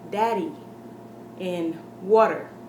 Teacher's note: we don't pronounce every single letter we say Daddy and water when we begin to lazily pronounce our D's and our T's that is actually the single rolled R for a Spanish-speaking person